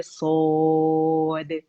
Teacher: आखिर में जो दाल आता है हमारे पास उसका कलकला करेंगे, बारीकी से अदा होगा